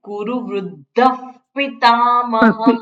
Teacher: વિસર્ગની પાછળ જ્યારે પ આવે ત્યારે વિસર્ગનો અડધો ફકાર ઉચ્ચાર થાય. ફ એટલે કુરુ વૃદ્ધ પિતામહઃ.